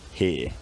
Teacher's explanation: In my accent, by the early 1800s, the r has gone, here, and then much more recently the centering diphthong has smoothed into a monophthong, giving here.